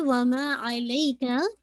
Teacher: माँ को आपने 2 काउंट पढ़ना है